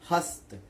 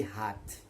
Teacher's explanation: हस्त, देखिए त पहली ध्वनि है, पहली ध्वनि त, दूसरी थ में बदल गई। देखिए त कम हवा है, थ अधिक हवा है। अल्प्राण महाप्राणीकरण।